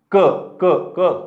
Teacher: क म्हणत असताना जिभेचा मागचा भाग हे मागच्या आपल्या मानेला चिकटतो आतून गळ्याला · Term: क वर्ग